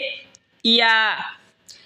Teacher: ইয়া হলকের মধ্যখান তার বরাবর উপরে তালের সঙ্গে লাগাইয়া উচ্চারণ হবে ইয়া।